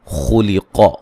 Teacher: خا کو موٹا ادا کریں گے، قاف کو موٹا ادا کریں گے